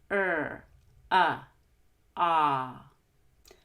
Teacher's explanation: for ah, your tongue is all the way at the bottom of your mouth, open wide like the doctor says.